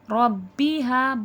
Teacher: با میں قلقلے کی صفات واضح ہوگی، آواز پلٹ کر سنائی دے گی ہمیں